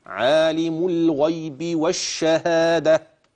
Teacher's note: تقف هتبدل التاء المربوطه هاء اوعى تقول الشهاده د ت لا تكون تاء الا عند الوصل